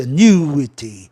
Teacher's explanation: o U do ditongo vai ser um ditongo decrescente